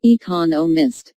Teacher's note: there are four syllables in economists with the stress on the second syllable